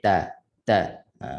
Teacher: makhraj di ujung lidah kita kita sentuh pada belakang pangkal gigi atas yang tidak sentuh gigi tapi dekat akar gigi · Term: huruf ta